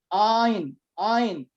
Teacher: Kalau yang laki-laki untuk ikhwan itu bergetar di tengah. Kalau belum bergetar di tengah ngorokan itu belum ain.